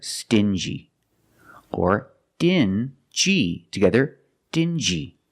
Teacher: These two words have the regular N sound, plus the J, like juice.